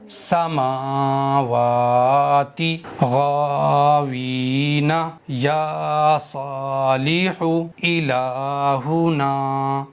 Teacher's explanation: غلطی یہ کرتے ہیں کہ میم کو نہیں کھینچتے ہیں، واو کو کھینچتے ہیں بس، حالانکہ میم پر بھی کھڑا زبر ہے اور واو پر بھی کھڑا زبر ہے، تو دونوں کو برابر برابر کھینچنا چاہیے